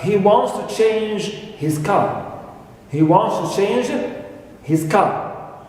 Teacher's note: So here, at the end, we have falling intonation.